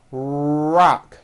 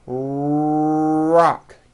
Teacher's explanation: notice how my lips are coming forward and my tongue moves back in my mouth and I push out the are sound watch this rock do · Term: American our sound